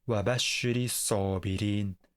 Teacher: But, did you catch anything strange about the The 2 MS imperative form is supposed to have a sukun. But, before hamzatulwasl, we need a kasra as a helping vowel for pronunciation